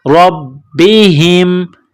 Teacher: با کے اوپر تشدید ہے تو با میں سختی کرنی ہے، ہا کو میم کے ساتھ ملائیں گے.